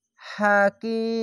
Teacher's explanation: শেষ অক্ষর সাকিন দিলে একটি দুটি তিনটি অক্ষর তিন আলিফ টানে পড়বেন মাদ্দে আরজি হবে